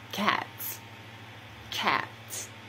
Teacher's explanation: the s ending is pronounced as s after the voiceless consonant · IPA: /s/